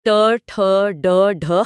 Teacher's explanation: जीभ थोड़ा फोल्ड होकर अपर पैलेट के हार्ड पार्ट को लग रही है यहाँ। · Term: मूर्धा